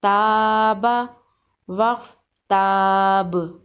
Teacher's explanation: وقف کی صورت میں با پر قلقلہ ہوگا